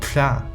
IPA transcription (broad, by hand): tɬa